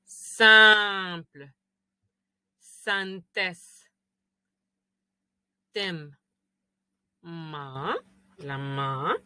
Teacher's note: Todas vienen de la nariz. Todas las que terminan en N o M, otra vez vienen como que si tuviéramos tapada la nariz. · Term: nasales